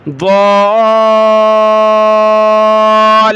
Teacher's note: الضالون المکذبون، ایو، ہا کو ضاد کے ساتھ ملایا، ضاد کو کھینچتے ہوئے لام کے ساتھ ملانا ہے، لام کو سخت کرنا ہے۔